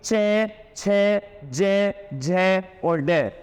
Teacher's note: यह सभी अक्षर उच्चारण होते हैं तालव्य से